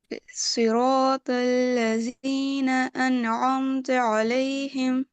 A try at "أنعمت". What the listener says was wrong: Now meme is good, but an کا مخرج ابھی بھی چھوٹ رہا ہے. انعمت.